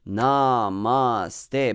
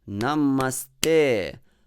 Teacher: In Sanskrit, you see all vowels there are short until te, because a is always long in Sanskrit. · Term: light, light, heavy